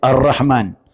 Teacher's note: Dia langsung masuk idgham bila gunnah. Dia masuk tanpa dengung. Ar-Rahman langsung ke ra dia.